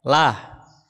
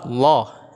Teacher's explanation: Jadi tarqiq itu tipis, maka larinya ke suara lah ya, lah. Kalau tafkhim larinya ke suara Allah ya, dia tebal.